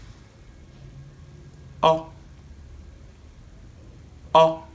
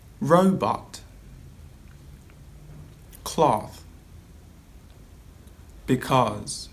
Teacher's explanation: it's a back mid open vowel sound it's also a short monophthong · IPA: /ɒ/